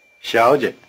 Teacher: Try repeating 小姐, the word for miss. 小姐 In this word, both syllables begin with the tongue in the forward position, the so-called palatal position.